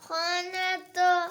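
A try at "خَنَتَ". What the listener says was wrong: खा मोटा पढ़ना है खाने तो।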